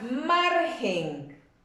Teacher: Margen no va acentuada, pero sí es una palabra grave por el solo hecho de que su fuerza de voz recae en la penúltima sílaba